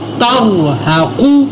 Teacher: تا زبر را تر، ہا زبر ہا، تر ہا، قاف پیش قو، تر ہا قو۔ یہاں پر میں نے را اور قاف کو پر ادا کیا